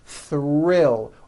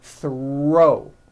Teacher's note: the r is the strongest sound of the blend and is louder than the th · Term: th HR Blends